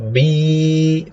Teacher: Ya, berarti tertutup lidah bagian tengahnya. Harusnya bi, tidak ada urusan dengan hidung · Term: huruf ya